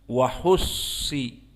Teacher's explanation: Maka as-sad di sini dari huruf al-mufakhamah, dan sad di sini musyaddadah